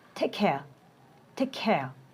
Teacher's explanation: The sound ka is dropped. But non-native speaker pronounce as take care with no reduction.